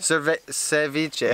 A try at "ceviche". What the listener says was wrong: No, so you're thinking of cerveza. Just think of the V. Cevi. Cevi. And it's not spelled with an S, it's spelled with a C.